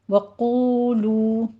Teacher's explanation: وَقُولُوا دونوں واو مدہ ہیں 2 کاؤنٹ کرنا ہے